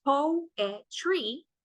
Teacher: Poetry has 3 syllables, poetry, right? We have 1 that is stressed at the beginning and 2 that are non-stressed.